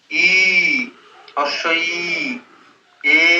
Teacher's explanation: ঠোঁট খুলে যাচ্ছে, প্রসারিত হচ্ছে, সেই জন্য এটাকে প্রসারিত স্বরধ্বনি বলা হয়